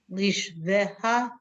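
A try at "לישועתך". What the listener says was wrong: Not leash. Le yosh the ha.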